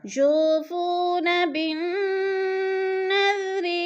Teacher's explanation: یو کو تھوڑا سا کھینچنا ہے وہ مدہ ہے، فو کو بھی کھینچنا ہے وہ مدہ ہے. وہ ساکن سے پہلے دونوں کے پر پیش آ رہے ہیں تو وہ مدہ کو ایک الف دو حرکات کے برابر ہم نے کھینچ کر پڑھنا ہے.